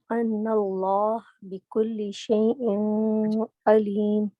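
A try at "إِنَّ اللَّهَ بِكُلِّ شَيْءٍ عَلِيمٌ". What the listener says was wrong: تھوڑا سا نا دو چیزیں، ایک تو یہاں پر نون کو غنہ ضروری ہے. ان اللہ بکل شیء علیم.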